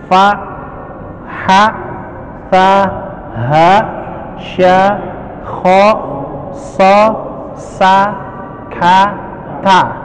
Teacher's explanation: Al-hamsu itu adalah pengucapan huruf yang dia diiringi dengan keluarnya nafas